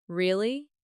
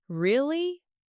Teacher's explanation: Rising tone sounds curious or surprised